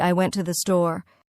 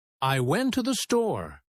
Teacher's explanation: the words to and the become so weak that they almost disappear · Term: unstressed words